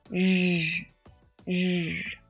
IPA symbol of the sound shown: ʒ